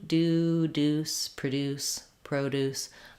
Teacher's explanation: do, with no gliding y sound there. If you're talking about produce, the noun, it's the same.